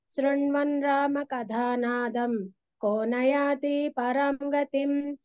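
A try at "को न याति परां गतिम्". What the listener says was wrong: ఇక్కడ రెండో లైన్లో రామ తర్వాత కథ, కథ, రామ కథ నాదం కోన యాతి అని దీర్ఘం చెప్పారు. దీర్ఘం లేదు అక్కడ. కోన యాతి పరాంగతి.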